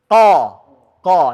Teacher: Mengenal fathah yang ditebalkan qo membuatnya tebal bukan bibir tapi pangkal lidah ini yang terangkat ke atas